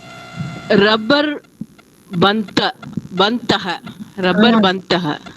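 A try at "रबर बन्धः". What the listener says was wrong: That daha, that visarga pronunciation should come.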